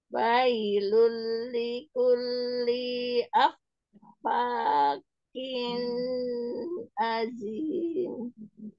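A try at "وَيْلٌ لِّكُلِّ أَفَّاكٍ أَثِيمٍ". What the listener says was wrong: Likulli lamnya kepanjangan sedikit ya.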